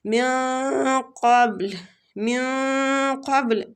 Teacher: نون ساکنہ کے بعد قاف مستعلیہ حروف ہے تو ہم نے قاف کے مخرج کے قریب جا کے غنہ کرنا ہے، ٹھیک ہے؟ اخفا کرنا ہے، سوری اخفا۔